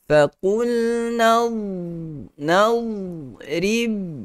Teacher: Huruf dad kata hati-hati, jangan sampai kita terlajak perahu sampai tidak mengundur lagi. Kerana huruf dad itu tidak ada qalqalah. Dad yang mati, matikan. Habiskan bacaan dia sahaja pada huruf dad itu.